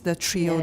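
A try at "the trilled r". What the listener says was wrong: 少了一个 the. So slow down.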